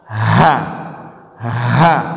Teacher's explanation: itu keluar dari pangkal tenggorokan